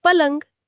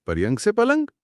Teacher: र और य का गुच्छा घिसकर ल बन गया और यह बन गया पलंग एकदम आरामदायक।